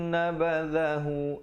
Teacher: dha di hujung lidah. Nabadhahu ri di situ menjadi nipis.